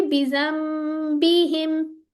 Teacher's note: नून साकिन के बाद बा आ रहा था तो नून को हमने चेंज कर दिया। किस में? मीम में। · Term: इकलाब का रूल